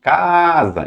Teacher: na hora que você chama casa, então o A de cá, né, vai se estender. Então ali está a sílaba tônica, ainda que não tenha acento, certo?